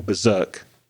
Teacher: the pronunciation of Berserk I tend to stress the second syllable